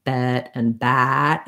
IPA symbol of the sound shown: ɛ